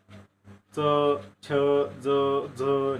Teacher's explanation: दंत तालव्य आणि तालव्य वर्ण दोन्ही सारखे वर्ण आहेत. तालव्य वर्णामध्ये जिभेचे जे काही पाते आहे आपलं कठोर टाळूला लागून हे तालव्य वर्ण जे ते निर्माण होतात